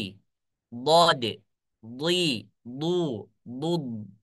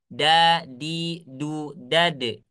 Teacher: suara huruf dhad itu dia lebih gemuk